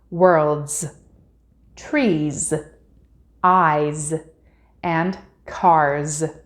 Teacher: if the word ends with a voiced sound it is pronounced as a z vo sounds make our vocal cords vibrate and we can feel